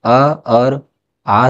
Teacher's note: उच्चारण स्थान की दृष्टि से हिंदी के अ और आ स्वर है तो इसको उत्तर है कंठ